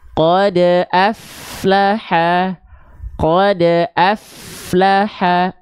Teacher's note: Qad aflaha, F-nya terus berjalan. Baik suaranya, baik nafasnya. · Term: huruf fa